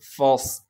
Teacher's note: فا صاد زبر فص۔ صاد کو موٹا کر کے پڑھیں گے اور صاد میں سیٹی بھی ادا کریں گے